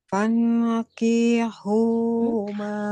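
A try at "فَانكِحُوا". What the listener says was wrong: Kafnya jangan dipanjangkan. Huruf kafnya cukup satu ketukan atau satu harokat saja.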